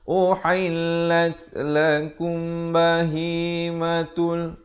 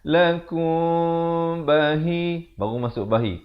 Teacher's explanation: disamarkan bunyi mim dan ba itu kadar 2 harakat. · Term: ikhfa syafawi